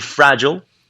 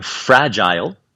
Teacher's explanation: que em inglês americano tende a ser ill e no britânico tende a ser ile